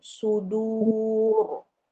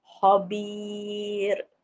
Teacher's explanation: Kalau dammah atau fathah >> dia tebal sudu du tu >> dammah kan kita muncung mulut kita kita sambung dengan ra jadi dia tebal sudur. >> Tapi kalau baris bawah ah dia panggil tarqib dia nipis khabir.